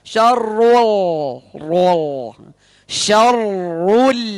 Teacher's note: ro tebal, lam tipis. Jangan sampai lamnya ikut tebal.